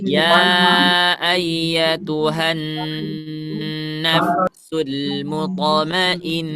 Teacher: Mutamainnah ini apa? Nah musyaddadah ya, jadi sempurnakan suaranya di hidung